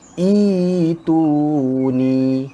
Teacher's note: Dia tukarkan daripada huruf hamzah kepada ya mad. Ya mad ni dibaca panjang 2 harakat. Kalau biasa kita akan baca, kita ikut huruf yang ketiga baris depan, maka kita baca hamzah wasal ni baris depan. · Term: ibdal